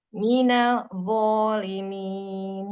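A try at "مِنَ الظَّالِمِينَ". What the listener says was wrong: Ya, langsung tebal minal gitu. Minal. Jangan sampai lo kelepasan angin. Minal wo. Ini nggak boleh ada angin. Wo bukan huruf hams. Dia jahar.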